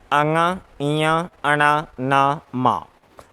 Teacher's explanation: इन पांच वर्णों का उच्चारण नासिका के माध्यम से हो रहा है और नासिका के माध्यम से उच्चारण होने के कारण इनको अनुनासिक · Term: नासिक्य व्यंजन